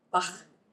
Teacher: the CH in Bach is the voiceless velar fricative